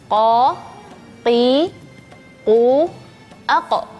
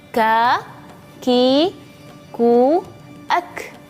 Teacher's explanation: Kalau huruf qaf itu tidak ada anginnya. Kalau huruf kaf itu ada anginnya.